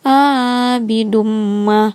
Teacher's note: Idgham Bighunnah karena huruf Dal berharakat dhammah tanwin bertemu huruf mim dibaca masuk dengan dengung dan ditahan sampai 3 harakat